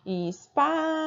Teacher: O Pá durou mais, ela é a penúltima. Então, ela é paroxítona, né?